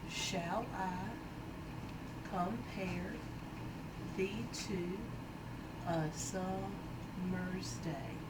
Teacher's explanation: there's 5 sets of unstressed stressed syllables per line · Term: iambic pentameter